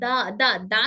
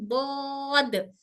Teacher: जुबान के किनारे और ऊपर दाढ़ों की जड़ से अदा होता है